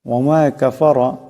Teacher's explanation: রা মোটা হবে, রার উপর জবর আছে।